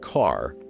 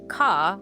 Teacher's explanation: dropping the R, saying something like ka, was considered working class or lower class